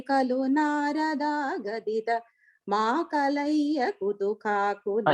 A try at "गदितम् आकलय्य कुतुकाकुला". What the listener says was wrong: Even there, instead of saying makalaya gaditam akalaya kutukakula. Second line la duratopi khalu narada gatitham akalaya kutukakula.